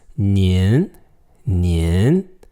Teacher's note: the voice goes slightly up